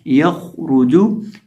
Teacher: یہ جو خا ہے اس کو ہم پر کر کے پڑھیں گے، موٹا کر کے پڑھیں گے، اور را کو بھی موٹا کریں گے